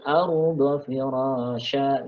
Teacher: ra-nya panjang dua harokat ini mad tabi'i firasyaw ya, tanwin fathah ketemu wawu namanya idgham bi gunnah.